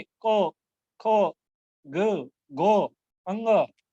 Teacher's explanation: ये हमारे कंठ को स्पर्श करके बाहर निकलते हैं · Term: कवर्ग